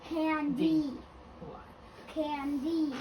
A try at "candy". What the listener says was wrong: Okay, just make sure you're not accenting that final syllable, okay? So you can say candy, but don't accent it. Make sure you're accenting the first syllable.